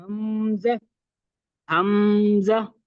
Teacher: حمزہ کو حلق کے آخری حصے سے پڑھا جاتا ہے اور سینے پر تھوڑا سا زور بھی دیتے ہیں